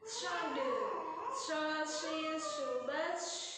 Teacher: Terus shod juga punya syafir, siul, bunyi itunya tuh. Bibir atas ke atas, bibir bawah juga ke atas ya.